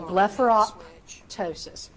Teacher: you do not have to pop that P in the middle, but I do want a slight P sound when you are saying the word